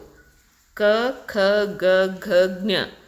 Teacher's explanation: ಕಂಠ್ಯ ಅಂದ್ರೆ ಕಂಠದಲ್ಲಿ ಉಚ್ಚಾರ ಆಗ್ತಕ್ಕಂತಹ ಅಕ್ಷರಗಳು